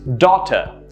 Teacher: Notice how the stress is in the first syllable and the second syllable sort of tapers down and is very soft.